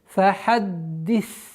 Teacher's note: Удержание даль, чтобы произнести полноценным образом удвоение.